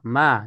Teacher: Mim juga ma dari kedua bibir.